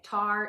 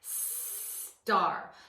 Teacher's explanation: And my hand cue for the S sound goes like that, where I slowly draw my finger across the front of my mouth, across the front of my closed teeth, showing them teeth are closed, tongue is back, and there's a continuous flow of air through the mouth for the S sound.